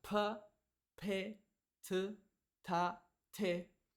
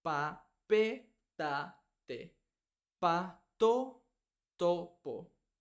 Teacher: diferente a inglés en inglés pronunciamos pa p t ta te en español es un sonido similar pero sin soplar sin sin aire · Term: sonido seco